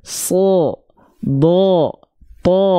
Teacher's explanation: bunyi vokalnya Oh kenapa karena dia huruf yang tebal